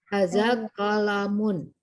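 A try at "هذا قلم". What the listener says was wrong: Nah, bagus sekali. Hada qalamun ahsanti.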